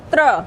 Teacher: त थोड़ा सा दबा हुआ निकल रहा है, फिर रा निकलता है,